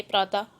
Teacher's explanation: विसर्ग वाले शब्दों को बोलते समय, जिसमें विसर्ग होता है, उनको बोलते समय ह की हल्की आवाज आती है